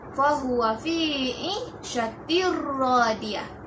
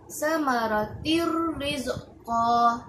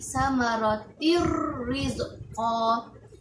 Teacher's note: tanwin bertemu dengan huruf ra yang pertama, ra yang di sebelahnya ditarik bacaannya masuk dalam tanwin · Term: idgham tanpa dengun